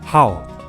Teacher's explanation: as the initial and the letters ao for the final okay in fourth tone so that abrupt sound